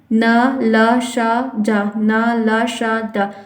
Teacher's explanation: आपके ऊपर के दांत के पीछे का जो मसूदा है वहां पर इसका उच्चारण हो रहा है